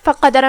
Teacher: کلمت فقدر میں یہاں حرف القاف ہے، قاف حروف التفخیم میں سے ہے تو ہم اسے بھاری آواز میں ادا کریں گے